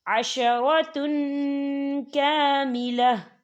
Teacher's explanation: ہے اکفا کا ورڈ ہے، تو ہم یہاں اکفا کریں گے، تنوین کی آواز کو ناک میں چھپائیں گے